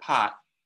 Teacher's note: if it's at the end of a word, pot, it is an unreleased stop